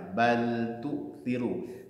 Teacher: Tu'thiru taknya dhammah, menyongskan bibir kita.